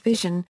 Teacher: voiced palato-alveolar sibilant, as the S in English vision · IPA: [ʒ]